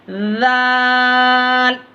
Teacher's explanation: ज़बान की नोक को सामने वाले जो दांत है ऊपर के आपके, उसके किनारे से लगा के पढ़ना, लाल, ऐसे करके।